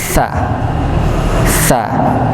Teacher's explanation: huruf sa itu ujung lidah bertemu dengan ujung gigi seri atas